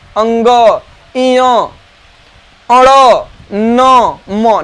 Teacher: जो 5 वर्ण हैं अंतिम वाले, इन 5 वर्ण का उच्चारण आपके नासिका से होते हैं।